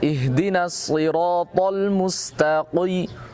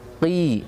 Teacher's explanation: qaf ketika dalam kondisi kasroh dia tafkhimnya tidak sempurna